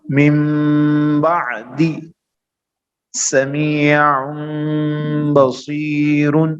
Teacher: اس نون ساکن اور تنوین کو میم سے بدل کر غنہ اور اخفا کے ساتھ پڑھیں گے. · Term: اقلاب